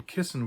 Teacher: double Ss are always pronounced unvoiced, always like an SSS sound